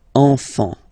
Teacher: Don't pronounce the T, you don't pronounce the S.